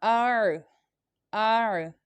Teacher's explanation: this عین comes from the middle part of the throat، یہ عین جو ہے حلق کے درمیانے حصے سے ادا ہوتی ہے